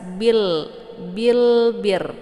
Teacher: Cara bacanya lamnya dibaca jelas atau biasa juga disebut dengan idhar qamariyah. Jadi bunyi lam ini dibaca jelas, bil bir ya.